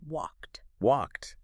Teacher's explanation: So we don't say walkade, we snap it shut with a T.